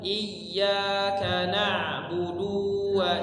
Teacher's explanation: sukun kemudian ayat yang selanjutnya [Musik] huruf ya ditasdid I kemudian huruf Dal du pendek jangan dipanjang